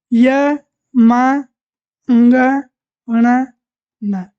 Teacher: इनका उच्चारण नासिका से भी किया जाता है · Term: नासिका ध्वनि